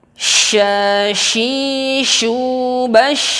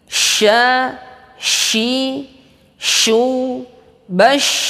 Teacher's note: tengah lidah melengkung mengena kepada langit-langit, sama seperti huruf jim, ya. Dan sifat sya ini adalah at-tafasyi, menyebarnya udara di rongga mulut kita. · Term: huruf sya